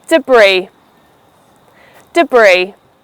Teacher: Two syllables, de and bree. However, the second syllable, bree is stressed